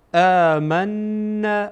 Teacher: میم با نون در اینجا وصل میشه و این نون در اینجا غنه میشه